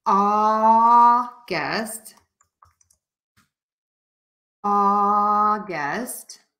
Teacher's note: for the word August that a u we are just going to pronounce it as an ah